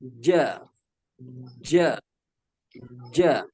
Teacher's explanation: Ketika menyebutkan huruf jim, maka pertemuan antara tengah lidah dengan langit-langit itu tersentuh dengan sempurna ya. Ja harus sempurna.